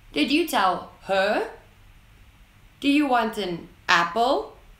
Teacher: Here you can hear that the sentence ends with a word that is said in an upwards tone.